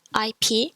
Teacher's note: ip which is like eep from leap example which means page remember that p isn't a plosive so there's no sound when you pronounce that